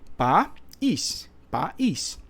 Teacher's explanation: quando o i nesse caso aqui ele forma iato ó porque agora os sons vocálicos não estão na mesma sílaba